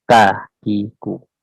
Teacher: Kalau huruf kaf hanya cuma istifal, jadi dia tipis